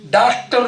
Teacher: जो चंद्र है अकेला, आपने डॉक्टर में भी डॉक्टर नहीं होता, डॉक्टर नहीं होता, डॉक्टर, दोनों के बीच में बोल रहे हैं, ना वो आ है पूरा ना वो ओ है पूरा